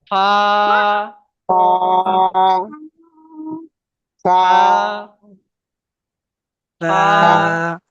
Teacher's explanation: দাঁতের আগা, ঠোঁটের নিচের ঠোঁট ঠেকান